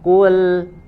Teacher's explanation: huruf lamnya sudah tipis, ya, tidak terpengaruh dengan huruf qaf. Qafnya tebal, lamnya dikembalikan.